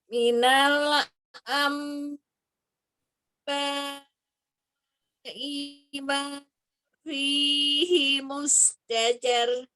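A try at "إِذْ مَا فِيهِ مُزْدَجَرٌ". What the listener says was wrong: I-nya jangan ngayun, I-nya pendek ya. Ba-nya itu yang panjang 4 atau 5. Am-nya ditahan 2 sampai 3. Minal ima fihi muzdajar.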